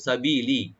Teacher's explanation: সাবিলি সিনটাকে open রাখবেন, আর বি একালে টানবেন, লাম একালে টানবেন